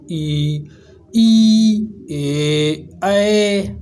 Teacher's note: अग्र स्वर जीभ के अगले हिस्से में से उच्चारित किए जाते हैं